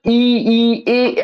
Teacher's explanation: अगर ई, ए बोलेंगे तो आपको पता चलेगा कि इसके उच्चारण के समय जीभ का अगला सिरा क्रियान्वित होता है, इसे अग्रस्वर।